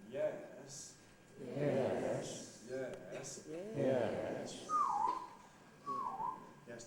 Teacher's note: the fall rise starts in the middle goes down and comes up again yes yes yes yes yes typically doesn't come up quite as